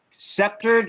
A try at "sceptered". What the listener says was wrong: Not sceptered. It's not the C is not pronounced as K.